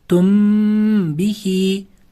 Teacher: sukunlik mim harfidan so'ng b va mim harfi kelsagina g'unna qilinar ekan. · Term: Ixfo shafaviya